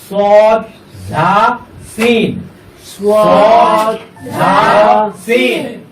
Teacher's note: জিহ্বার আগা সামনের নিচের দুই দাঁতের পেট ও আগার সাথে লাগাইয়া শীষ দিয়ে